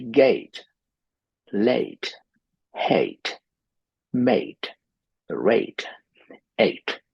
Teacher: The problem with South Asian languages is that we don't have A, so we simply say E.